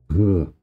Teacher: This is the same as the h in buch, in German, but voiced.